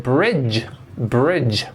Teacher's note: what happens when we put the D sound before J it sounds like J J it's the sound at the beginning of June and July or